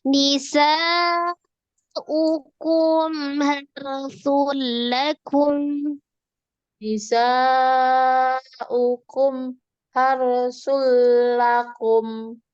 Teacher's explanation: Tapi kita lihat sifat huruf nunnya itu, mimnya itu mengalir sebagian, tawasud atau bainiyah. Jangan dijedah, tapi dialirkan, disambungkan.